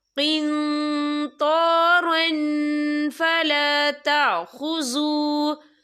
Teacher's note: تنوین کی آواز کو ناک میں چھپائیں گے۔ کیسے؟ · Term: اکفا